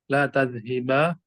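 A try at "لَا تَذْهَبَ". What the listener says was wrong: Loh, kok berubah lagi? Huruf haknya itu di fathah terus. La tadhaba, bukan la tadhiba. Ini wazan la taf'al. Di fathah.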